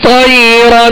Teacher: را کو پر پڑھیں گے اس لیے کہ دو صبر کی تنوین ہے، مگر ہونٹوں کو گول نہیں کریں گے